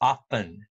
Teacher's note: more people pronounce it as often without the t sound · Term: t is dropped